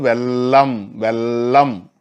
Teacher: மேல்வாய்ப்பல்லினுடைய முதல்ன்றது இந்த இடத்துல அடிப்பகுதியே எது நா விளிம்பு வீங்கி ஒற்றவும், நாக்கினுடைய ஓரப்பகுதி சென்று ஒற்றுதல், ஒற்றுகிற காரணத்தினாலே லகரம் பிறக்கிறது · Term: ஒற்றொலி